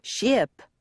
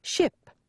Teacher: tongue don't spend a lot of time on the I vowel shorten it to the point that it almost sounds like there's no vowel at all